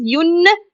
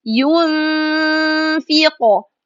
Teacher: And then pronounce the sound, or let the sound comes from nose for 2 counts, and pronounce letter fa clearly after that. So it will be ينفق, like this. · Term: ikhfa